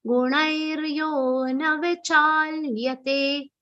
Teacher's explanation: Gunairyo na vichalyate. Lyate, la is half, ya is complete.